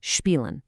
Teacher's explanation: When SP or ST start a word, that S sound magically transforms into a sh sound.